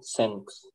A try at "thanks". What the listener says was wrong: теперь я слышу звук с... Тот принцип такой же, вы язык между зубами, а лучше к верхним его ведете. Th-th-th. И получается такой шепелявый.